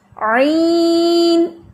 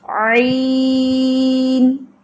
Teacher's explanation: عین یہ ناک میں ہے, عین یہ منہ کے اندر ہے. یہ والی آواز دینی ہے آپ نے.